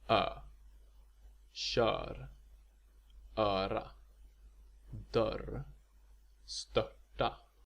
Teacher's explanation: This sound is a rounded equivalent to the Ä sound that we talked about earlier.